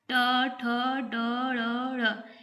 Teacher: ट वर्ग, ट, ठ, ड, ढ़, ये है इनका उच्चारण करते वक्त ये इसको मूर्धा, मतलब कि जब हम लोग मुंह से बोलते हैं तो जो जीभ होता है हम लोग का टंग, वो मुड़ता है। तो उस समय जब उच्चारण होता है तो उसे हम मूर्धन्य या मूर्धा वर्ण भी बोलते हैं।